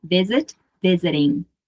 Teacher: Lembrando que eu uso a pronúncia americana, então, muitas vezes esse T, ele muda um pouquinho e quase se torna um R, como em arara, ok?